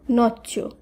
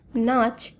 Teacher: আর নব্যভারতীয় আর্য ভাষায় এই যুক্ত ব্যঞ্জনের একটি লোপ পেল অর্থাৎ একটি চ লুপ্ত হলো এবং পূর্ববর্তী স্বরধ্বনি দীর্ঘ হলো